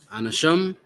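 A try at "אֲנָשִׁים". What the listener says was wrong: It's Anashiam. Are you not seeing the Yas there? Keep an eye out for those Yas, man. Keep skipping them.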